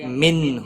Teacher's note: نون ساکن کے بعد حروف حلقی کا ہا آیا ہے، اظہار حلقی ہوگا، گنہ نہیں کریں گے